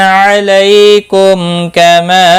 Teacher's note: میم ساکن کے بعد کاف آئے، یہاں پر اظہار شفوی ہوگا، غنہ نہیں کریں گے. چھوٹی مد ہے، مد منفصل، 3 الف کے برابر کھینچ کر پڑھیں گے.